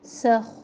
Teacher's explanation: मा अलिफ मद्दा नंसख, यहाँ पे हम इख्फ़ा करेंगे नून साकिन पर, बारीक इख्फ़ा। सख, ख़ा में बहुत ज़्यादा खड़खड़ाहट ना हो